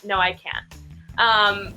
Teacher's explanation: when we're saying can't, because it's basically silent, the T